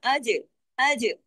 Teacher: जीम को heavy नहीं करेंगे जीम पे क्या होगा कलकला होगा · جیم پہ کتب جد کا لیٹر ہے، کتب جد کا جیم. جیم کو ہیوی نہیں کریں گے، جیم پہ کیا ہوگا؟ کلکلا ہوگا. آج، آج جیم کو صرف ہلانا ہے.